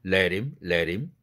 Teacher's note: 흐 날아간 자리로 링크됨과 동시에 연결됨과 동시에 다른 말로 연음 처리가 된 동시에 플랩 사운드까지 되는 겁니다.